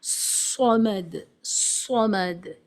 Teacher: اوپر آپ دیکھ رہے ہیں صاد کے اوپر ایک بیلون شیپڈ ہے، جس کا مطلب یہ ہے کہ اس کو ہیوی ساؤنڈ سے پڑھنا ہے، اور اس میں ایک آواز وسل یا سیٹی کی سنائی دینی چاہیے. صمد، صمد، یہ اس حرف کی کیریکٹرسٹک ہے، یہ خاصیت ہے.